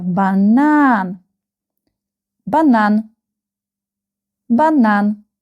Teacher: The second syllable is stressed